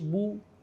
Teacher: اور پیش کے اندر ہونٹوں کو گول کر کے ادا کرتے ہیں، پیش کو ادا کرتے ہوئے ہونٹوں کو گول کرتے ہیں